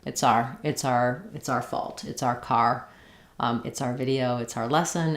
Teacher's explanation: So this triphthong of our becomes more just R.